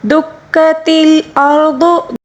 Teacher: را کو پر پڑھیں گے، ضاد کو بھی پر پڑھیں گے۔ را کو اس لیے پر پڑھیں گے کیونکہ را ساکن سے پہلے والے حرف کے اوپر زبر ہے، اس کو پر پڑھیں گے، ٹھیک ہے۔